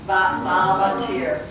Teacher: So you're using the lower lip and the upper teeth. You're going wah, but we're going va.